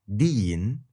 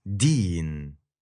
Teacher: the tip of your tongue actually touches your upper teeth and the blade of your tongue.